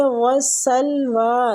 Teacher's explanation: رہا ہے، کم المن، نون مشدد ہے، غنہ کریں گے، والسلویٰ، سین باریک سیٹی والا، واو پہ بھی ہونٹوں کو گول بھی کرنا ہے اور کھڑی مد ہے تو اس کو کھینچیں گے، کھڑی زبر